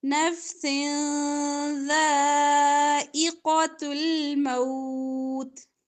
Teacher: نفس دو زیر کے بعد ذال آ رہا ہے تو اخفا ہوگا